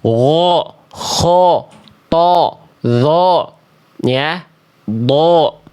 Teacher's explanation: Huruf-huruf tebal itu kan ketika berharakat fathah bunyi vokal a-nya gemuk kayak vokal O